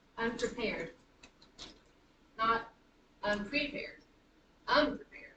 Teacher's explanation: The stress is on the last syllable, so it's unprepared, unprepared.